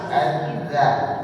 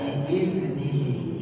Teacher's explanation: pakai dzal, ujung lidah ketemu dengan gigi yang atas